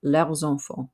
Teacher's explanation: Normally we don't say the S, but because it's followed by a vowel, we can make a liaison there between leur and enfant. But remember, it makes a Z sound.